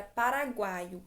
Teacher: paraguaio que é oral e eu tenho primeiro a semivogal u depois a vogal a depois a semivogal i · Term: tritongo